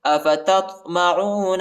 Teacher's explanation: تا کو طوا کے ساتھ ملائیں گے، طوا کو موٹا پڑھیں گے۔ افتطمعون، اور طوا کے اوپر قلقلہ بھی ہے، ٹھیک ہے، یہ حروف قلقلہ کا حرف ہے۔